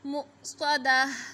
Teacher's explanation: मुस्वादा, जब वक़फ़ करेंगे तो पढ़ेंगे मुस्वादा। ता को हा साकिन की आवाज़ में चेंज करेंगे, मुस्वादा। मीम ज़बर सिन साकिन मस गैन ज़बर गा मसगा बा ज़बर बा मसगाबा ता दो ज़ेर तीन मसगाबातिन।